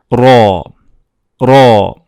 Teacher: Just the tip of the tongue hits the post-alveolar, and it makes a little space, so it lets the sound to go through. Without this little space, the sound will be different. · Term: rolled R